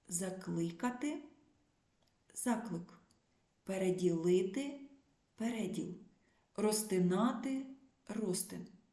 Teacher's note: це відбувається в іменниках чоловічого роду що утворені від префіксальних дієслів наголос як правило переміщується на префікс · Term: перенесення наголосу